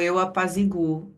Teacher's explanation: apazigo com acento e aqui eu apazigou, que é a outra pronúncia, terá o u forte pronunciado e tônico sem acento algum